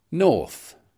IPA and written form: nɔːθ (north)